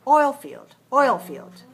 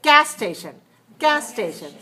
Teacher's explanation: in english the noun compound takes a stress on the first word